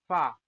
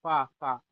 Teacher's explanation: जब आप फा बोल रहे होंगे तो आपके दांत जा रहे होंगे होठों के अंदर।